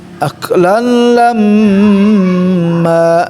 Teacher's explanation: Jadi ada tahanan dengungnya, hidungnya al khayshum. Gunna musyaddada.